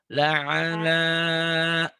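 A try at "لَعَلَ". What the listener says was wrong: Ainnya kurang apa ya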